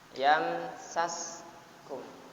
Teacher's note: Yamnya dibaca idhar syafawi. Mim mati bertemu dengan sin.